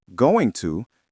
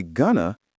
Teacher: The sounds blend and change. When you say going to, you have 3 very separate syllables. But when you say gonna, it flows. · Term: connected speech